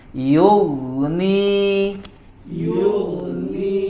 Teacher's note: ghain sukun sebelumnya dhammah. Yughni. Yughni. Dibaca dengan tebal.